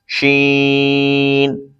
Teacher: شین زبان کے درمیان تالو کے درمیان سے ادا ہوتا ہے